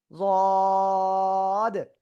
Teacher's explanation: জিহ্বার গোড়া নিচে লাগবে, উপরে মাড়ি দাঁতের গোড়ার সাথে লাগবে, লাগিয়ে উচ্চারণ করতে হবে।